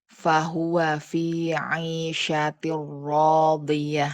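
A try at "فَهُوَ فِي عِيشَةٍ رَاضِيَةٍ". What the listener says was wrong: La enggak gitu rnya.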